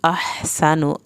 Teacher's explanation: हा को हल्क से पढ़ना है, सीन को सीटी की आवाज़ के साथ पढ़ना है